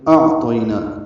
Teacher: حمزہ کو عین سے ملانا ہے، حمزہ اقصی حلق سے، عین وسط حلق سے ادا ہوگا۔ طاپور اور طی عین لین ہے، 1.5 حرکت ہی لمبا کرتے ہیں، اس کو زیادہ لمبا نہیں کر سکتے۔